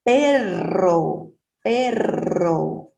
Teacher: tem essa vibração quando é R doble